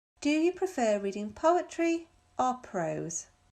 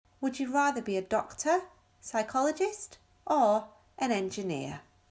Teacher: إذن لما بيكون عندي سؤال فيه تخييرات كتيرة فالصوت بيرتفع ببداية الاختيارات وبينزل بآخر اختيار.